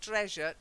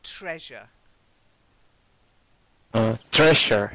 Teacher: You've got to get a t sound at the beginning.